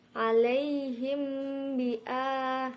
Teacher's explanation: mim sukun bertemu huruf ba yaitu ikhfa syafawi dibaca samar